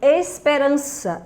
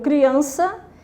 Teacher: esperança rima com criança e ambas são paroxítonas que a sílaba tônica é a penúltima